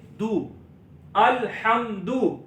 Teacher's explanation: دال پر پیش ہے ہونٹوں کو گول کریں گے